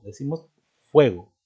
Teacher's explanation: La sílaba tónica está en la E, no lleva hiato.